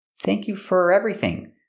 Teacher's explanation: When I say thank you for, I don't say for, I say fur, because it's not stressed.